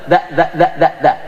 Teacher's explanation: Sa di ujung, da, agak sedikit ke dalam